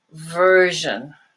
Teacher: that's similar to sh but you use your vocal chords it's voiced